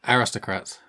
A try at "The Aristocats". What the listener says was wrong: You can't pronounce it. You said Kratz.